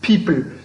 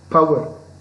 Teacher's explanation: the first sound the initial sound is aspirated